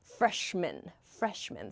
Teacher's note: this sounds like almost an e sound, men, like the plural freshmen